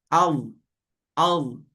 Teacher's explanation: Walaupun bunyi dia macam ada angin tapi dia tak ada angin. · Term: jahar